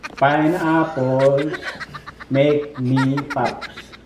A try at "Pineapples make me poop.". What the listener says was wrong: That is not pop, that. Poop. not pop.